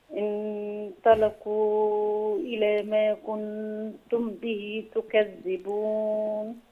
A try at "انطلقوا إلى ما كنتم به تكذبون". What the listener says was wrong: في إخفاء شفوي لو يعني نحافظ عليه برضو. تم به غنة هنا.